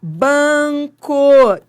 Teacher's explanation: ele nasalizou o A